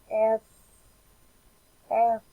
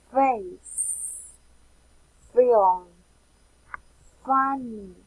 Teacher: the sound F is labiodental because the place where the closure occurs are the lower lip and the upper front teeth.